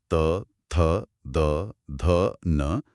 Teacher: त वर्ग की सारी ध्वनियां त, थ, द, ध, न, दंत्य हैं। आप बिना जीभ को दांत से लगाए त बोल ही नहीं सकते। · जीभ अब दांतों को छुएगी यानी दंत्य ध्वनियां।